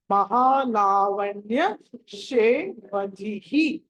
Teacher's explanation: కాబట్టి దాన్ని ధిహి అని పలకాలి మహా లావణ్య శే వదిహి అని పలకాలి హ అన్నది మహా ప్రాణాక్షరం కాబట్టి ఒత్తి పలకాలి · ధి తర్వాత విసర్గం ఉన్నది కాబట్టి దాన్ని ధిహి అని పలకాలి మహా లావణ్య శే వదిహి అని పలకాలి హ అన్నది మహా ప్రాణాక్షరం కాబట్టి